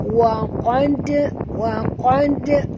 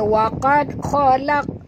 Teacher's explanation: huruf dal ini mati di tengah-tengah kalimah, maka kita kena lantunkan bunyinya. Wa qad, macam tu Jangan baca waqad khalaq. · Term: qalqalah